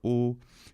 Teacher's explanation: a little bit lower o something between that close O and U a little bit like how a lot of Scottish speakers sound